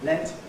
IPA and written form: let (let)